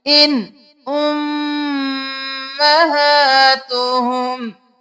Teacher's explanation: आगे हरूफ हल्की में से हमजा आ गया, हम इजहार करके पढ़ेंगे